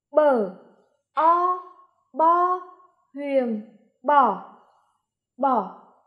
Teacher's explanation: tiếng bò có âm bờ đứng trước âm o đứng sau thanh huyền nằm trên âm o